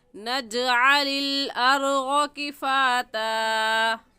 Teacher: جیم حروف قلقلہ میں سے ہے، قلقلہ کر کے پڑھیں گے